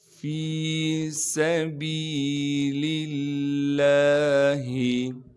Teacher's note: سین میں سیٹی ادا کریں گے کیونکہ سین سیٹی والے حروف میں سے ہے۔ با کے بعد یا مدہ ہونے کی وجہ سے با کو ایک الف کے مقدار کھینچیں گے۔